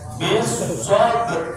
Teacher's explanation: rohnya tidak dibaca dengan vulgar, tapi rohnya tetap terbaca pada makhrajnya, sehingga yang muncul hanya getarannya. Ya, pengkolannya ba harus jelas. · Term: ikhfa bil makna